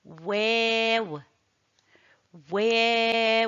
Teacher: il est prononcé en arrondissant les lèvres et élevant le fond de la langue